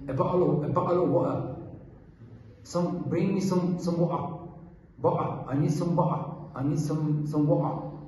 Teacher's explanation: In Manchester, they have a lot of glottal stop.